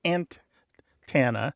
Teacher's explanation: But the other thing that's happening is that first stressed syllable can pull the vowel that follows it in a different direction than the speaker intends or usually would say. So stressing ant in the first part of the ant tana, may take that second vowel and turn it more like an A and less like an E. It's a physical, mechanical thing happening in the mouth.